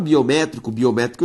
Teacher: biométrico tem como sílaba tônica é a antepenúltima por isso uma proparoxítona